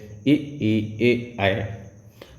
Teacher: जब जीभ का अगला भाग कार्य करता है, सक्रिय रहता है, तो उन्हीं को हम अग्रस्वर कहते हैं